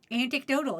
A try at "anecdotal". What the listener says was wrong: Not anecdotal. 1 T. Anecdotal. You're adding an extra T. There is. Anecdote. Not antecdote.